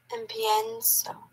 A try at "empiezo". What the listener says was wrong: Empezar, there's no N.